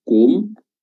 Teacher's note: Hum ya di sini kum eh ketika dia D bibir dimyongkan namun ketika dia mendarat di mim sukunnya itu bibir enggak Monyong lagi kum Bukan tapi kum kembali ke posisi semula naumakumb naumakum subataib